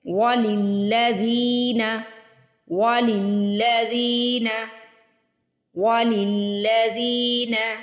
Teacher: وَلِلَّذِينَ، لام کو لام سے ملائیں گے، وَلِلَّذِينَ، زال کے نیچے دیکھیے زیر کے بعد یا ساکن آ رہی ہے تو زی کو سٹریچ کر کے پڑھیں گے، کھینچ کے ادا کریں گے۔